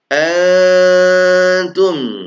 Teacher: samar samar ya ikhfa hakiki nun mati ketemu ta